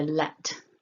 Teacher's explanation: So to make it nice and clear, let, there's a bit of a puff of air coming out of the mouth